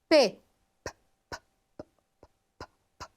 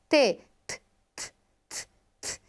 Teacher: Geralmente essas consoantes plosivas, oclusivas, elas serão mais fortes, mais impactantes. Aqui nós temos obstrução total e momentânea do fluxo de ar. Um exemplo, p, eu não tenho som nessa consoante. · Ela me traz uma oclusão forte no trato vocal. E além disso, ela é rápida. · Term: consoante plosiva ou oclusiva, consoante plosiva